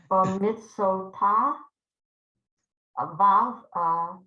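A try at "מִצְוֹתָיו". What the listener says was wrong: Mitzvotav. It ends with a V.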